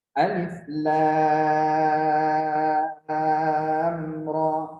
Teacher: Dia terkadang ada yang dibaca dengan panjang 6 harokat ya. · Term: Fawatihus Suwar